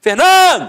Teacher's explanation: a penúltima sílaba é a sílaba tônica